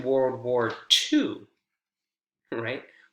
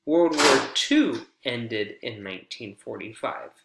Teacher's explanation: we rise that intonation we elongate the the strong syllable in that focus word right to really emphasize and stress the corrected piece of information